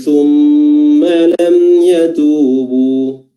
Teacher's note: thumma mimnya bertasydid, di sini juga durasi dari tasdidnya diperpanjang sedikit, ya, seperti huruf nun, ya.